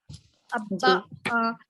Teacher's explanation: با کا جو ہے مخرج ہونٹوں کے دو ہونٹوں کے درمیان